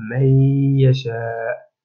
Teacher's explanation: لأن النون الساكنة جاء بعد حرف الياء الذي هو من حروف الإدغام، وهنا تشديد كما رأينا